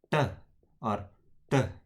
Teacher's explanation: So retroplex consonants are made with the tongue tip curled back